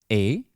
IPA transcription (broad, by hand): e